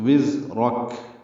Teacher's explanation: وزرک واو زا سے تیز صفیر کی آواز سے ادا کریں گے ، زا کو را پر پڑھیں گے اور را کو کاف